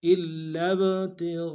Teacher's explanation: زور دیں گے، اگلے لام کو با کے ساتھ ملانا ہے، با جب ساکن ہوگا حروف قلقلہ میں سے ہوگا، قلقلہ کریں گے ، تا کو نون سے ادا کریں گے، غین کو گہرائی